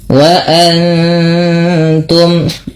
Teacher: Wa antum, nun mati bertemu ta, dibaca dengan bacaan ikhfa. Cara membacanya yaitu dengan menyamarkan bunyi nunnya kepada huruf ta, yang dimana kita ketahui bahwasanya ta makhrajnya atau tempat keluar huruf ta itu berada pada ujung lidah menempel dengan antara gusi atas dan gigi seri atas, ya, dia di tengah-tengah antara itu.